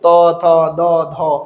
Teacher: দন্ত থেকে জিহ্বার আগা দাঁতকে স্পর্শ করে